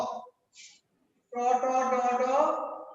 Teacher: ট ট ড ড এগুলোর জায়গার উচ্চারণের জায়গাটা হলো মূর্ধা।